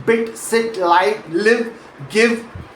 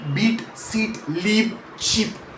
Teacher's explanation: The short ih sound is more relaxed, the tongue sits lower and more toward the center of the mouth, and it's genuinely a shorter sound in duration.